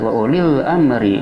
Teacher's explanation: alif lamnya alif lam qamariyah yang wajib idhar, yaitu lamnya dibaca dengan jelas. Wa ulil amri dikarenakan lam bertemu dengan hamzah, salah satu huruf alif lam qamariyah yang 14 yang dikumpulkan dalam lafaz ibagi hajjaka wa khaf aqima.